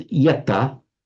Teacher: Past participle is yata. Normally you would expect it to be something like yanta, but it's not. The n drops out, and so it has yata.